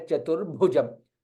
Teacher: Bha again is Mahaprana, is in green color. Hence Mahaprana. You will put extra stress there.